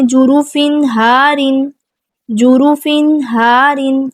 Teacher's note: فا پہ تنوین، بعد میں ہا ہے، اظہار کریں گے۔